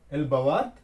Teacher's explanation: at the ending we are raising the tone and adding question mark.